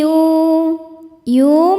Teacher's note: Alladzi yu yu mad thobi zohiri karena ada wau sukun sebelumnya dammah. Cara bacanya panjang dua harakat.